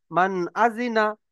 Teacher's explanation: নুন সাকিনের পরে হুরুফে হালকি ছয়টি অক্ষরের মধ্যে হামজা এসেছে, তাই নুন সাকিনের আওয়াজকে বিনা গুণনায় জাহির করে পড়তে হবে।